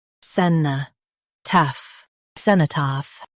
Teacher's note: Emphasize cen and soften taph.